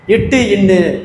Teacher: நாவின் நுனி அன்னத்தின் நுனி தொடுவது